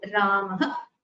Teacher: It is similar to a H sound, ha, and it has half the duration of the H sound. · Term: Visarga